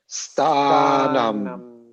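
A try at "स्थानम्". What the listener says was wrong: So this is an aspirated sthanam. So the th is aspirated. Don't forget that. Sthanam. It's aspirated. I have it as th.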